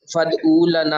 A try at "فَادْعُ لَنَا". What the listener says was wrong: فَادْعُ لَنَا، فَادْعُو نے او کہیں گے تو واو بن جائے گی. فَادْعُ لَنَا رَبَّكَ.